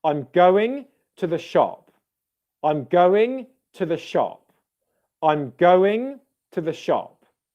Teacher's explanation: the first syllable in going i'm going and then you'd have to the would be low stressed like it would kind of sound like one word but two syllables to the and both syllables would be quieter and less stressed · In terms of stress, it would be like I'm going to the and then shop would be louder.